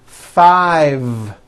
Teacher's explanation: I said 5 with a voiced V.